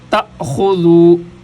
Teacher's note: اصل میں حمزہ ہے تو یہ الف کی شکل میں ہے لہذا یہاں پر جھٹکا دیا جائے گا